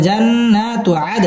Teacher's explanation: দাল কলকলার হরফ ধাক্কা দিয়ে পড়তে হবে